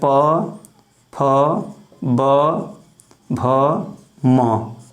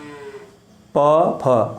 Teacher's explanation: इनका जब हम उच्चारण करते हैं तो हमारे जो दोनों ओंठ होते हैं वो सट जाते हैं। बिना दोनों ओंठ को सटाए इनका उच्चारण हम कर ही नहीं सकते हैं।